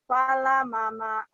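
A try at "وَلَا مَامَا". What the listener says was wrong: Fala, bukan fa tapi wala mama. Lagi.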